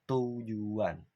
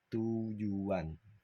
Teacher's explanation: setelah kata ju itu ada W yang nyempil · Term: labialisasi